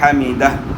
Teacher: ہا کو اپنے مخرج یعنی گلے کے درمیان سے ادا کرنا ہے